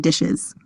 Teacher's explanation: inserts e after a sibilent before the plural suffix s as seen in dishes